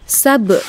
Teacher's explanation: gitu ya sab itu disebut dengan Qalqalah sugro qqalah kecil ya karena berada di tengah-tengah kalimat dia dibaca memantul gitu ya